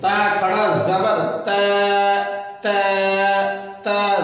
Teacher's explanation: زبان کے نوک اوپر کے دانت کے جڑ میں لگے، تا کا ساؤنڈ نکلے گا